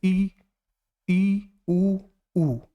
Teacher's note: जब कोई अक्षर बोलिए तो मुंह कम खुले, जैसे ई ऊ, मुंह कम खुला तो ये संवृत होते हैं